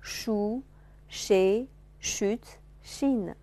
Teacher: 来体会一下不同的元音的变化啊，口型的变化啊，shu,she,▁chute,▁chine。啊，圆唇、扁唇、圆唇、扁唇啊